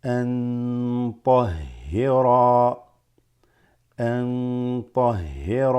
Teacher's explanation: this noon followed by a ta makes the noon have ikhfa, where you slightly extend it